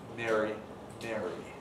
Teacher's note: they've lost the distinction between long and short vowels before R